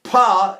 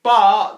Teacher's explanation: If I do pa, it's leaking, and if I go ba, the breath is stopped.